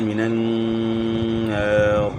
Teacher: یہاں جو ہے نا غنہ بھی ساتھ ہوگا، نون مشدد ہے